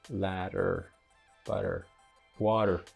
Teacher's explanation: Instead of doing the T, the plosively, you do it in a tapped or flapped way by rapidly touching your alveolar ridge with your tongue.